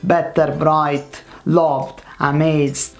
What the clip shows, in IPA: t and d